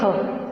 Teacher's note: जब ख का उच्चारण करते हैं तो हमारी स्वर तंत्रियों में कोई कंपन नहीं होता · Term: अघोष